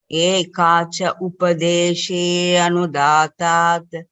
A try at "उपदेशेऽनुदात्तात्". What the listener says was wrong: अकारः नापेक्षितः, पूर्वरूपसन्धिः अस्ति अत्र।